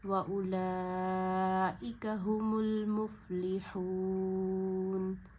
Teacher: حروف مدہ کو وقف آنے کی وجہ سے 3 فنگرز جتنا کھینچا جاتا ہے. یہاں 3 فنگرز جتنا واو مدہ کو کھینچیں گے اور نون کو ساکن کریں گے، کیونکہ وقف سے پہلے والا جو لاسٹ لیٹر ہے، حرف ہے، اس پہ زبر زیر پیش ہو تو اسے زبر زیر پیش کے ساتھ نہیں پڑھتے بلکہ ساکن کر دیتے ہیں. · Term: مد عارض